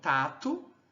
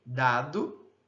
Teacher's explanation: Nós temos agora as oclusivas alveolares também distintas, né, pelo traço de vozeamento. Então nós temos a não vozeada T, então tato e a vozeada de dado, certo?